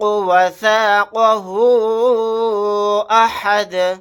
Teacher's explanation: last میں دال کو ساکن بنا کر پڑھیں گے آیت کرنے کی صورت میں